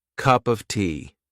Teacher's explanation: in your phrase and the next word starts with a consonant there is a big big chance that a native speaker would replace of with a